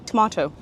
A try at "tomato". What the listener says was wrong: You add a D. Why'd you add a D?